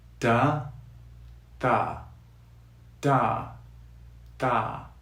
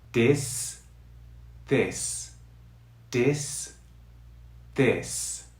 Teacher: If your tongue hits the base of your teeth up here, the sound results as a D sound.